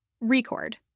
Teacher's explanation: But when it's used as a verb, the stress is on the second syllable, record.